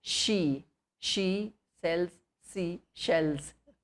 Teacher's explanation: this sh is talavya, or the sh which is pronounced from the talu